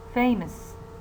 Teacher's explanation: the first syllable is prominent, while the second syllable that contains schwa is less prominent